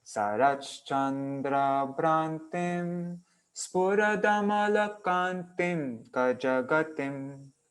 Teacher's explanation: So it's like short, then 5 long, and then 5 short.